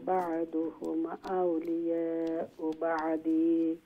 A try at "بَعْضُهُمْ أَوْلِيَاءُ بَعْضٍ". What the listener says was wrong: بعض দিয়ইতো নাই, আউলিয়া ও বাউদ দুইটা জের সাকিন হয়ে যাব।